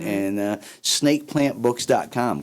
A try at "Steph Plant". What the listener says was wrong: Not snake. Steph Plant. You said snake.